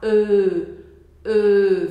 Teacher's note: Você vai fazer uma boca de O, mas você vai deixar a ponta da sua língua encostando nos dentes de baixo. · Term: som do E